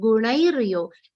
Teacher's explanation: Nai will be a long sound followed by a half ra sound. Gunairyo. Not gunaira.